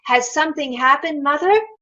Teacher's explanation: Rising intonation which signals a question